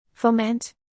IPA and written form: foʊˈmɛnt (foment)